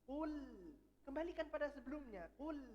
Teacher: Sebelumnya dhammah. Jadi lamnya tipis, sebelumnya tebal.